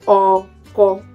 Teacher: No accent on that. It's a middle tone, flats.